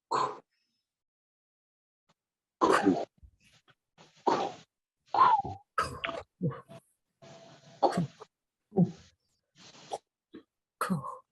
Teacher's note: You're going to keep it in that shape and say the consonant. So a KW, I'm going to round my lips and say the K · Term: rounded consonants